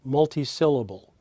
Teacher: the middle one in this case sill is the highest pitch we call that therefore the primary stress